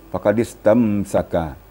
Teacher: Kemudian lagi faqad istamsaka, mim sukun bertemu sin itu izhar syafawi. Maka tidak boleh dilamakan. Tak boleh tahan suara pada mim sukun yang bertemu dengan selain mim dan ba.